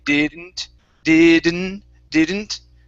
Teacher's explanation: we can actually halfway pronounce that D